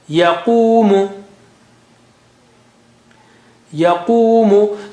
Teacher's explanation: So we are stretching only the qaf here, the qu sound here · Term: waw mad